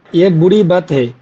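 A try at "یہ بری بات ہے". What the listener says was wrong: বাত একটু টান দিতে হবে, বাত হে।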